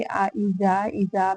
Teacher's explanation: اذا میں الف مدہ ہے، 2 کاؤنٹس لمبا کریں گے